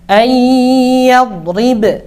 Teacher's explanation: Nah, ba-nya mantul ya. Kenapa kok mantul? Karena huruf ba memiliki sifat qalqalah.